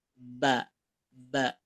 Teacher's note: kalau pengucapan ba itu kedua bibir ditekan